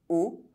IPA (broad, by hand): o